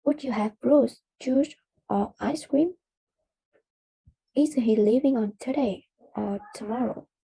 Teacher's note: The tone rises on the first part of the question and falls on the last part